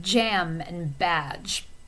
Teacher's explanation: Okay, the voiceless version, or the voiced version of that, I mean to say, is j, like jam and badge. So this sound would be a voiced post-alveolar affricate.